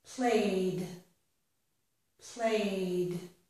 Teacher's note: it sounds like d because the word play ended in a vowel sound.